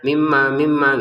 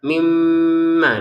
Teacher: Mim bertasdid kita dengungin dua harakat ya.